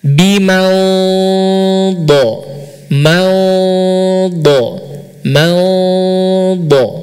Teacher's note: ikhfa itu seperti apa bunyinya nun sukun ya nun sukun atau antara Eng dan n